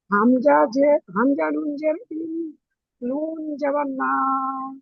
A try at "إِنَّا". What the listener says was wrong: নুন আলিফ মা, শোনেন, নুন আলিফ মাদ জাবার না। পড়েন।